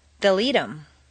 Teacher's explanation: in fluent speech the th of them is frequently dropped as is the H in other object pronouns